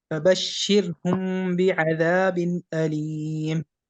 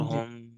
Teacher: ناک میں تو آواز جو ہے وہ چھپا لی آپ نے، اس کو پڑھنے کا طریقہ ہم نے پڑھا تھا کہ اس کو جو ہے وہ میم کو جو ہے وہ خشکی والے حصے سے نرمی سے جو ہے وہ ہونٹوں کو رکھنا ہے، خود بخود ناک میں آواز چھپ جائے گی۔ جی فبشرہم، ٹھیک ہے، کیونکہ ہم اگر آپ جو ہے یہاں پر تھوڑا سا زور دیں گے تو پھر آپ کی ناک میں آواز جو ہے وہ کم جائے گی اور میم واضح ہو جائے گا۔ · میم ساکن کے بعد با آ جائے تو وہاں اخفا ہوتا ہے۔ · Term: میم اخفا